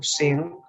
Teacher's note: l'anglès quan fa els gerundis, quan diu sing, fa servir un so nasal velar